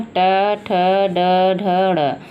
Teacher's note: ये मुख के मूर्धन्य भाग से उच्चरित होते हैं। मूर्धा से उच्चरित होते हैं, मूर्धा से निकलते हैं, इसीलिए इन्हें मूर्धन्य वर्ण कहते हैं।